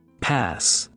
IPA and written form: pæs (pass)